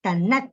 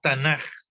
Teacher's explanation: Cuando la K de Ketubim está al final, se alarga, se prolonga y se pronuncia como J. Es una cuestión técnica del idioma.